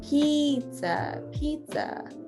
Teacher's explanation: that i is very long it's an e sound